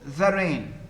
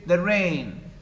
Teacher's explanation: So the first foot, the rain, 2 syllables, the and rain. The second one is the stressed one. We say the rain, weak, strong. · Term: iambic